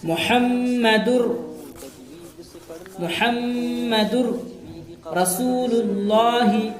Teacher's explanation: محمد رسول اللہ، اصل میں محمدن تھا، لیکن تنوین کے بعد حروف یرملون میں سے را آیا ہے، تنوین کو را سے ملائیں گے، پھر بغیر غنہ کے پڑھیں گے۔ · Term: ادغام بلا غنہ